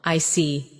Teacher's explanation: When you show understanding with I see, your tone drops slightly to show calmness. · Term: falling tone